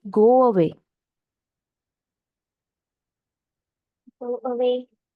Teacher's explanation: you'll find a sound of w in between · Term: semivowels, semi vowels